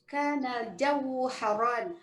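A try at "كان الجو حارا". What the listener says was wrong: Salah. Bukan haron. Haran. Ulang.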